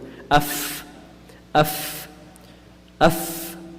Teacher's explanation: Fa is very easy when the edge of the upper central incisors meets the wet part of the lower lip.